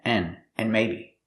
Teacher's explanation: We hear the word and, not pronounced and, but pronounced n